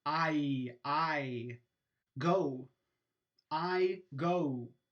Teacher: the o on go is a diphthong